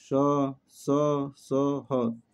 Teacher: उसमें व्यंजनों का उच्चारण एक प्रकार की रगड़ या घर्षण से उत्पन्न वायु से होता है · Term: उष्म व्यंजन